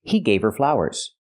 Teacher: You don't hear the H in her because her is not a stressed word.